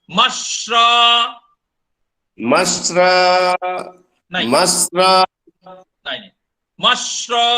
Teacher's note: आप स्र बोल रहे हैं, मैं बोल रहा हूं श्र। ये तालव्य श और र मिलके श्र है। आप बोल रहे हैं स्र, मैं बोल रहा हूं श्र, अंतर है।